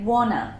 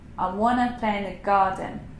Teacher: what we often do with want to is we put it together and we say wanna